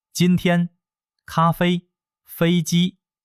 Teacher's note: 第一声，声音要保持在高而且平的位置，像一条直线。